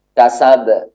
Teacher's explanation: Nah, ini kok ada suara yang memantul, kasab, kok ada suara yang memantul. Yang memantul itu adalah sifat qalqalah, bukan suara yang mengalir. Suaranya tertahan, namun dia memantul nanti.